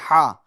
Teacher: अहद ये दरमियान हल्क से अदा होता है। हा अहद में जो हा है वो ये वाली हा है।